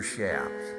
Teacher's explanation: the CH sound is really pronounced with an SH sound